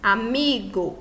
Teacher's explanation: Llana ou grave, penúltima sílaba da palavra mais forte.